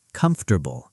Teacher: Americans usually squeeze it. Comfortable. The middle syllable basically disappears.